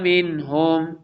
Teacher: نون ساکن کے بعد ہا آ رہا ہے حروف حلقی میں سے، اس لیے یہاں پہ اظہار ہوگا